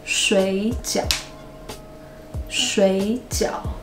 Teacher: the first third tone sounds like the second tone